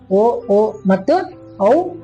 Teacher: ಓ ಅನ್ನೋದು ಕಂಠದಿಂದ ಉತ್ಪತ್ತಿಯಾಗಿ ತುಟಿಯಲ್ಲಿ ಬಂದು ಕೊನೆಗೊಳ್ಳುತ್ತೆ. ಹಾಗಾಗಿ ಇದನ್ನ ಕಂಠೋಷ್ಟ್ಯ ಅಕ್ಷರಗಳಂತೇಳಿ ಕರಿತೀವಿ.